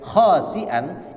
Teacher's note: kalau khasi'an, kha, sin bukan shin, kemudian hamzah bukan ain